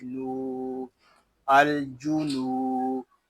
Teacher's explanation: یہاں نون کو ہم ایک الف تک کھینچ کر پڑھیں گے کیونکہ یہاں واو مدہ ہو رہا ہے